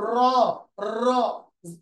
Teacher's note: র উচ্চারণের সময় জিহ্বা কাঁপে, এই জন্য এটাকে বলা হয় কম্পনজাত, কম্পনজাত ধ্বনি।